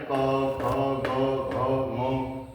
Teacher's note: तो ये सीधा गले से आवाज आती है कंठस्थ है